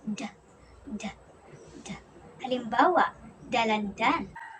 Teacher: Ang D naman ay napabilang sa pangipin at pasara na may tinig.